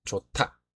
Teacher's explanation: 히읗과 디귿이 합쳐져 티귿이라는 하나의 음운이 되었습니다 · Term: 축약